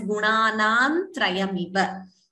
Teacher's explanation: You could combine it optionally as gunanam trayamiva. Please note, va is a hrasva. It should not be prolonged.